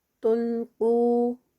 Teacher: قاف ہیوی ہوگا اور 2 counts کا اسٹریچ